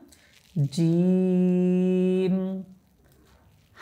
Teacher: জিম এটা উচ্চারণ করার সময় আমরা তিন আলিফ পরিমাণ টানবো হ্যাঁ জিম হা লম্বা হা এটাকে বলা হয় আর এই লম্বা